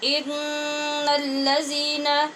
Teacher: ان الذین، إن الذين. یہاں نون پہ ہم نے غنہ کیا ہے نون کے مشدد ہونے کی وجہ سے